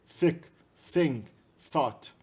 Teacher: representa o som do tha, o som da interdental surda